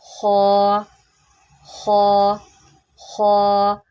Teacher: خا حروف مستعلیہ میں سے ہے، اس کو آپ نے موٹا کر کے پڑھنا ہے، اٹ مینس دیٹ کہ تھک وائس میں پڑھیں گے